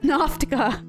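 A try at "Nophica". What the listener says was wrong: Nofika. Okay, you kept adding a T in there.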